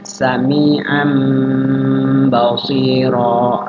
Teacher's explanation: Tanwinnya berubah jadi mim, maaf, bukan ba. Ya, tanwin berubah jadi mim. Cara bacanya adalah mim. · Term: iqlab